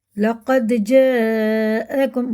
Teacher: مد متصل ہے، حمزہ آ رہا ہے اس کے بعد، تو یہ 5 الف کے برابر کھینچ کے پڑھیں گے